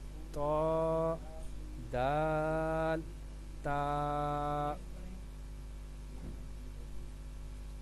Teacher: زبان کی نوک اور اوپر کے دانتوں کی جڑ سے ادا ہوتا ہے۔ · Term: حروف نطعیہ